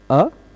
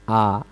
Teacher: अ बोलने में कम मुंह खुलता है। आ बोलने में थोड़ा सा ज्यादा खुल जाता है। है ना? यद्यपि इन दोनों का उच्चारण स्थान यक है।